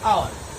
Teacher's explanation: এইচ থাকার কারণে উচ্চারণ হওয়ার কথা ছিল হাওয়ার, বাট আমরা উচ্চারণ করছি আওয়ার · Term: সাইলেন্ট এইচ